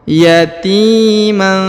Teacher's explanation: huruf Ti diayun sekali atau dipanjangkan dua harakat